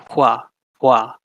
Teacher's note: speakers say this sound some don't it's a bit archaic and it's basically a voiceless version of wha of the w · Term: voiceless approximant